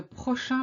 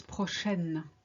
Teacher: Prochain is the masculine, which ends in the sound un. Prochaine is the feminine, which ends in the sound n. You see, by just adding an e to the sound un, it becomes n.